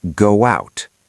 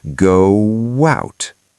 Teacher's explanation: Say go. Your lips are round. To get to out, your lips have to open. That movement creates a w sound.